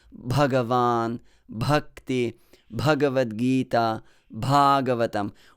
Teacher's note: chant words like bhagavan bhakti bhagavad gita bhagavatam with that aspiration that extra gush of air that comes out of your lungs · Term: aspirated sound